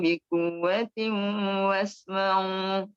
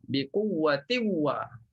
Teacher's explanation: jumpa tanwin bertemu waw, maka kena baca bila gunnah